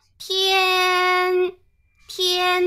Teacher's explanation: 西方的语言比起来，我们这个声调的特征还是挺明显的，对吧？声调明显，尤其体现在演唱当中，因为我们知道在唱的时候啊。根据旋律的起伏，旋律哆来咪发嗦拉西哆进行了各种排列组合以后，它就形成了高低起伏不同的一个旋律。那么在这个旋律当中，要把我们的字安插进去，让它变成歌词，它就带来了一个问题，为什么呢？因为我们的这个声调啊，以普通话为例。如果我们的普通话有一二三四四个声调，对吧？每一个声调我们都是按照5度标记法来表示这个声调的。比方说 一声，它就是5/5调值，就是说从5念到5 。你比方说天，天，它就从高到高，是吧？这样的一个声调。那如果是二声呢？它的调值就是从三